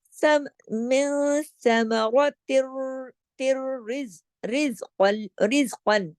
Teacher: تا کی آواز را میں جا رہی ہے، لیکن ادغام تام بلا غنہ، بغیر غنے کے۔ میں نے بتایا تھا نا کہ جب لام اور را 2 حرف ایسے ہیں، یہ جب ادھر ادغام ہوتا ہے تو غنہ نہیں ہوتا، اس کو کہتے ہیں ادغام تام بلا غنہ، بغیر غنے کے، ٹھیک ہے۔